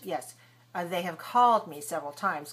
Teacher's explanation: called is the main verb have is the auxiliary and that's very weak